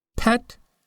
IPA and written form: pɛt (pet)